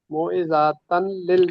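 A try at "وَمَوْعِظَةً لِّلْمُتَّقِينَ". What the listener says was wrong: वाव भी पढ़े। व माओ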